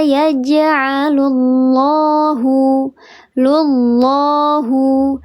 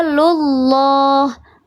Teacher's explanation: Lafzul jalalah yang sebelumnya harakatnya dhammah atau fathah maka dibaca tebal, namanya lafzul jalalah tafkhim.